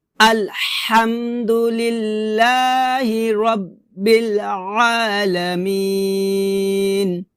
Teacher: আইনটাকে গলার মাঝখান থেকে চাপ দিয়ে উচ্চারণ করতে হবে